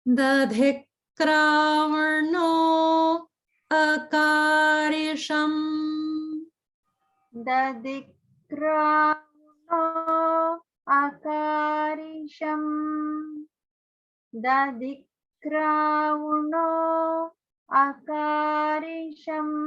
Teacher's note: dadhikravno is ending in the dirgha O sound. And then the next word is starting with a vowel. So there's a gap there.